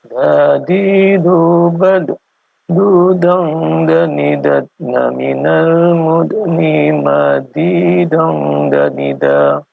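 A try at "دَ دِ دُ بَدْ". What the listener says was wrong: Untuk dalnya, qalqalahnya coba dimunculkan Pak. Dadidubad. Bad. Coba dimunculkan.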